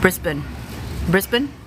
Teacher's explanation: with emphasis on the first syllable